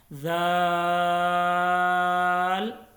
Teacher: ذال کو بھی نرمی کے ساتھ اور 3 سے 5 الف کے برابر اس کو لمبا کرنا ہے